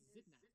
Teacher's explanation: voiced alveolar fricative, near close, near front, unrounded vowel, voiced alveolar stop, alveolar nasal, near open front, unrounded vowel, voiceless, labiodental fricative